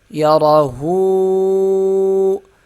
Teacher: ہا کو ایک الف کی مقدار کھینچیں گے کیونکہ اس کے اوپر الٹا پیش ہے۔